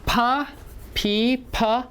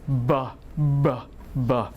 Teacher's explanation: B is voice you can see that they are the same you use two lips they are the same but one is voiceless the other one is voice